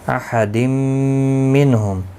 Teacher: بین، بی یا لین ہے، تھوڑا نرمی کے ساتھ کھینچ کر ادا کریں گے، نہ کو کھینچنا نہیں۔ احد منہم، تنوین کے بعد یرملون کا میم آیا ہے، ادغام مع الغنہ ہوگا